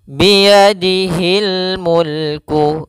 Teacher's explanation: biyadihil Mulk Kemudian pada lafalzi di sini ada Mad thii yaitu kasr bertemu ya panjangnya dua harakat